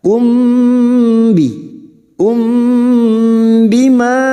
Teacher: Wamalam yahkum, yah huruf ha, yahkum, mim sukun bertemu ba, mim sukun bertemu ba, namanya bacaan ikhfa syafawi, mim sukun mendengung selama 2 atau 3 harokat.